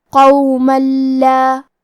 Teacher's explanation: لام حروف الادغام بغیر غنہ میں سے ہے اور ادغام کا معنی ہے حرف کو حرف میں داخل کرنا، تو ہم یہ تنوین کو لام میں ملا کے بغیر غنہ سے لیکن تشدید کے ساتھ یہ حکم کو ادا کریں گے